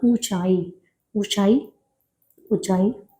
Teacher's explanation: अनुनासिक जो नाक से ध्वनित हो रहा है